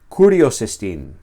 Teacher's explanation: Y es porque se pronuncia juntamente con la palabra que precede. es como si su acento se traslada a la palabra anterior y estas dos palabras se pronuncian juntas. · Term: enclítica